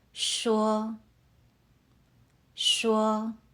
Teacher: Keep your voice high and steady, like you're holding a note. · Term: first tone